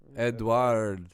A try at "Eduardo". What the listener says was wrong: See, you're saying with a W. Eduardo. Eduardo.